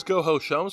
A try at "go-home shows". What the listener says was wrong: Go-home shows. No, you said go-ho shows.